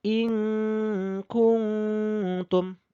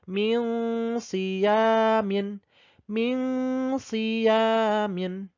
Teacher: Dibaca samar dan mendengung 1,5 alif. Ingat, cara bacanya samar, dengung. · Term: ikhfa